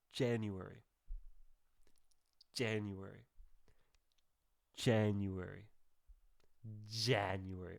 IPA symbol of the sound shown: dʒ